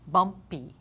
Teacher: this final Y is in an unaccented syllable, and it's going to sound like a long E.